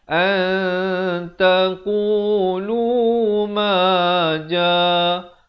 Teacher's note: qu 2 harakat, lu 2 harakat, ma 2 harakat, ja 4 atau 5 harakat